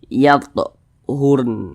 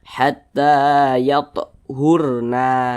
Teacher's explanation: Huruf nun kan tidak dibaca panjang, sehingganya huruf nun ini kita sukunkan atau kita matikan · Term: berwaqaf